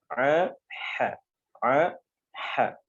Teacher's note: tenggorokan bagian tengah itu ada huruf ain dengan ha